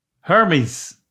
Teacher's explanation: A Z sound. Instead of a S, it ends in a Z.